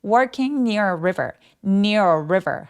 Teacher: 혀끝이 천장에 닿지 않게 river라고 소리 내 주시면 굉장히 자연스럽습니다.